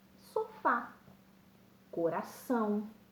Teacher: uma palavra oxítona, ou seja, que tenha a última sílaba tônica mais forte.